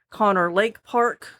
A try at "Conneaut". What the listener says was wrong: No, it's Conneaut Lake Park. There's a typo there. There's a T. It ends on a T. Conneaut, gentil Conneaut. Conneaut Lake Park in Conneaut Lake, Pennsylvania.